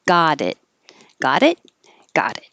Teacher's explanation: the t in got changes to a d and the t in it doesn't release so you don't hear it as it you just hold your